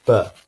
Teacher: And then do the same thing and try making the sound represented by the letter B, or B. When you make the sound represented by the letter B, your vocal cords, and hence your throat, are going to have a lot more vibration. So this vibration is what's called voicing.